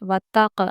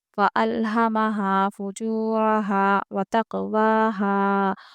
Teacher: ये हुरूफ़ क़लक़ला में से है क़ाफ़, इसलिए हम यहाँ पर क़लक़ला करते हुए पढ़ेंगे